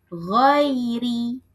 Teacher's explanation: rin-nya dibaca tipis karena apa? Karena sebelumnya ada ya sukun